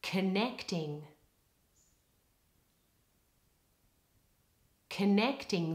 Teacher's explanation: in the word connecting all of the stress is on the middle syllable and the first vowel becomes the weak Val schwa have a